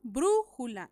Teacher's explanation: elevación de voz en la ante penúltima sílaba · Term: esdrújula